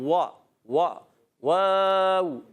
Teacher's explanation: واو کی ادائیگی ہوتی ہے ہونٹوں کی گولائی سے، دونوں ہونٹ گول کر کے وا وا واو، اور جب حرکت ادا کریں گے وا واو زبر وا، ٹھیک ہے؟